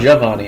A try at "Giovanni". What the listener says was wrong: Well, Giovanni is the more proper pronunciation. The Italians don't pronounce long vowels with every vowel like Americans tend to do. So it's not Giovanni, it's Giovanni. It's a little smoother.